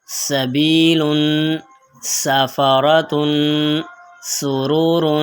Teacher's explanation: سین کی آواز باریک اور سیٹی والی ہوتی ہے